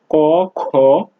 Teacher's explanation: কোনো কোনো ধ্বনি উচ্চারণের সময় স্বরতন্ত্রী অনুরণিত হয় না, তখন ধ্বনিটির উচ্চারণ গাম্ভীর্যহীন ও মৃদু হয় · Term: অঘোষ ধ্বনি